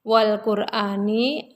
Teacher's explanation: Lam Qomariah sebab alif lam menghadapi huruf qof tandanya ada sukun cara membaca Alif Lam Qomariah adalah bunyi huruf lamnya tampak